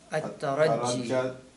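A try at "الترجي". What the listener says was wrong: It's not isn't it al-tarji? You're putting a shadda on ra, it's not there.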